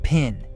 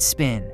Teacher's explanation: The first one is aspirated. You can feel a puff of air. The second is not. Hold your hand in front of your mouth and try it.